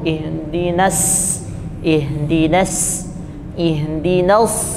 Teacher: kalau Shad itu langsung ditebalkan pangkal lidah langsung naik